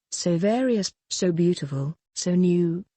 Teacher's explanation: unstressed stressed unstressed stressed unstressed stressed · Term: iambic pentameter